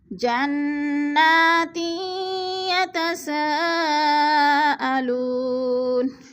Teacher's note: یتسا پہ مد متصل ہے، چار الفی مد ہے، چار الف کے برابر ہم نے اس کو کھینچ کر پڑھنا ہے۔